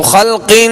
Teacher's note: یہ جو آواز ناک میں لے جا کر ٹھہرائی اسے غنہ کہتے ہیں